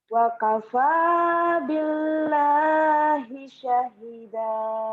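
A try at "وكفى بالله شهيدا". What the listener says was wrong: Syahida panjang.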